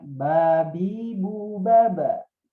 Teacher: dibunyikan mutlaqan fathah, aqrabu ilal fathah. Jadi lebih dekat kepada bunyi fathah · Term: qalqalah